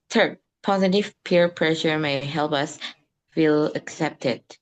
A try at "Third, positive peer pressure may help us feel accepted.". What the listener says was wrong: Nice.